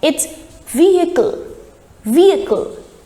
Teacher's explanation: Now here the H sound is dropped and the right pronunciation is vehicle.